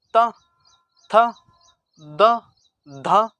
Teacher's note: आप देखेंगे जो जीभ है आपकी वो किससे टकरा रही है, दांतों से टकरा रही है। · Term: दंत्य व्यंजन